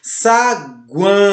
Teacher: Começa com a semivogal, passa para uma vogal e retorna para a semivogal. Então, os tritongos têm sempre essa característica.